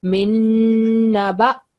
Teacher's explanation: Min naba. So ba don't have a shadda. We are not going to join noon with ba.